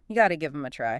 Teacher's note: When the phrase is spoken quickly, that T sound in got to often turns into a softer, fast D sound. This is called the flapping T in American English.